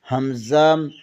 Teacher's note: ہا اقصی حلق سینے کی طرف والے حصے سے ہا ادا ہوتا ہے۔ حمزہ اقصی حلق سینے کی طرف والے حصے سے حمزہ بھی ادا ہوتا ہے